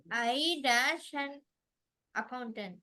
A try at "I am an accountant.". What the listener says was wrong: I am an accountant. and வருது accountant ஏல ஆரம்பிக்குது. I am an accountant. அந்த and விட்டுற கூடாது.